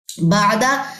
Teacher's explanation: عین جو ہے وسط حلق سے نکلتا ہے